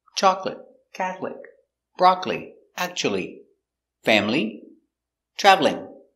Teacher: today we're looking at some words that have a silent syllable they look like three or four syllables but one syllable is silent